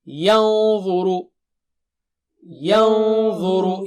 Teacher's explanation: تو نون ساکنہ کے بعد ضا ہے تو ضا، تو نون ساکنہ بھی موٹا ہوگا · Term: اخفا